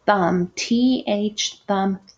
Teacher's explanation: your tongue goes out and your teeth touch your tongue